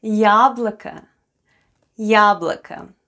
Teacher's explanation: Then we have О, К, and О. Both letters О are unstressed and pronounced as А.